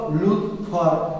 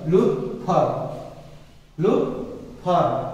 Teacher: এটা এই তয়ের উচ্চারণ, এই খণ্ড তয়ের উচ্চারণ এবং তয় হসন্তের উচ্চারণ কিন্তু একই উচ্চারণ, অর্থাৎ তয়ের সাথে অটা উচ্চারিত হলেও মূলত খণ্ড তয়ের সাথে মূলত অটা উচ্চারিত হয় না